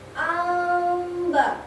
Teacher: Bacaannya sedikit berdengung tapi tetap menyebutkan mimnya di akhir. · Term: iqfa syafawi